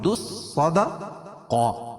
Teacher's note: دال کو صاد میں ملیں گے